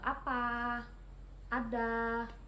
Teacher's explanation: vokal A rendah bawah depan dengan posisi mulut terbuka